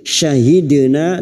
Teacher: dal sukun yang mati asli di tengah kalimat qalqala syugra, jangan lupa dipantulkan